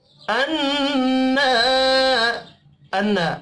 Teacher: نون مشدد پر غنہ کریں گے